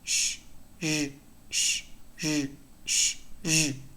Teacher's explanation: sh is voiceless, Z is voiced.